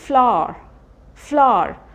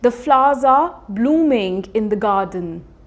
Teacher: तो देखा मैंने बिल्कुल हल्का सा साउंड, र पे बिल्कुल हमने स्ट्रेस नहीं किया।